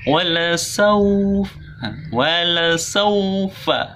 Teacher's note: Wala saw menggunakan u, jadi saw harus monyong ini, jangan malu-malu